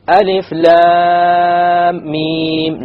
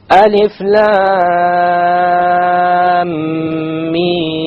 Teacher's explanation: the lam 6 harakas, the mim 6 harakas, and in between the 2 ghunna of 2 harakas